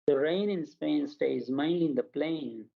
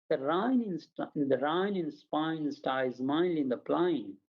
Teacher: ह नहीं बोल सकते, ए को आए बोलते हैं।